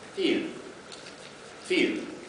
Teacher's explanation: the Scottish pronunciation, you also hear it very often in American English, of dark L in initial position.